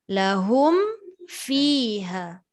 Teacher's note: Sedangkan mim syaratnya rapat dua bibir. Fa tidak rapat dua bibir.